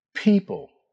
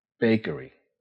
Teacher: >> [clears throat] >> Both sounds begin with your lips together. The P sound uses a small puff of air. People. Practice. The B sound uses your voice. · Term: P and B